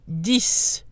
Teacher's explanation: The X is pronounced and sounds like an S.